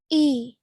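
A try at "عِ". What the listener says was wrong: Okay, with an ain. Okay, so put your fingers to the middle of your throat, roughly halfway down your neck, and see if you can get the sound of ain from there. Ain.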